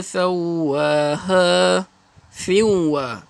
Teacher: Masukkan tanwin dengan huruf wa, asal sin. Bila masuk dengan wa di siwa, dengung 2 harakat.